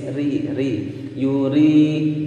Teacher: karena ra berharokat kasroh maka dia dibaca tipis ri ri yuri, dan dibaca panjang dua ketukan karena ada kasroh